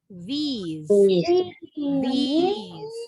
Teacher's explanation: I-nya panjang. These. These. S-nya bunyinya jadi Z. Kalau yang ini S-nya tetap S ya.